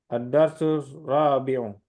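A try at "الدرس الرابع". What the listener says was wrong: Ad-darsur rabi'u. Pakai syamsiah di situ.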